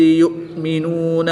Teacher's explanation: حمزہ ساکن پر جھٹکا دیں گے اور عین پر جھٹکا نہیں دیں گے۔